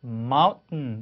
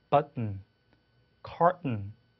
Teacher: 그래서 mountain 이렇게 발음하죠. 그래서 t를 하지 마시고 혀끝을 치경에 갖다 대면서 거기서 하고 소리 내보세요. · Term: held t